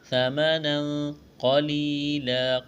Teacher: ثمنا قلیلا، قاف کو موٹا کرنا ہے، یا مدہ ہے، ایک الف کے برابر کھینچنا ہے، وقف کریں گے، دو زبر کی تنوین کو الف سے تبدیل کرنا ہے